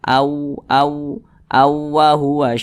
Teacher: jadi suaranya itu kita tahan ya kita panjangkan sejenak panjangnya itu dua harakat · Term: didengungkan